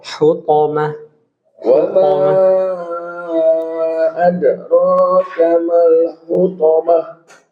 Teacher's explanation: Huruf to nggak boleh keluar udara.